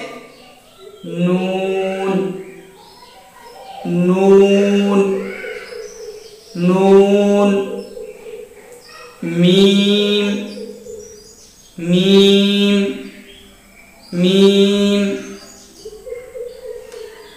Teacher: नोज से, जिसको हम गुन्ना बोलते हैं। गुन्ना यानी नून एंड मीम नाक के बासे से अदा होते हैं, निकलते हैं।